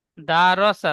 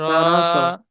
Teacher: দাল টান হবে না, হারাকাত টান হয় না, দাল জবর দা।